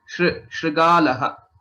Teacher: There's no stress on shri because it is a Gunitaksharam.